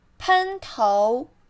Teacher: 喷 flat tone. 头 second tone.